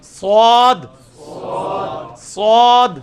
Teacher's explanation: سواد سواد, سین سواد, سین سواد. سین کی آواز کو موٹا کیا, سواد بن گیا